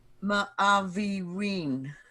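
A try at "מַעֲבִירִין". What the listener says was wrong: Good. Ma'avirin. Good.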